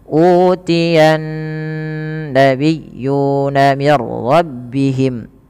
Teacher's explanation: nun sendiri juga ada bacaan gunnah, maka ia ditahan sepanjang 2 harokat ketika membaca nya